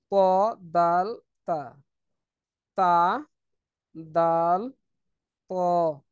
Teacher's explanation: র তারপরে হচ্ছে ত ত দাল তা ত দাল তা হচ্ছে জিহ্বার আগা সামনের সামনের উপরের দুই দাঁতের গোড়ার সঙ্গে লাগিয়ে